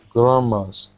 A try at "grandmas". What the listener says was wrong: Good. Yeah, there you go.